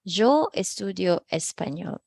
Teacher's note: It's not yo as in muy, but rather there's this like J, para siyang hota.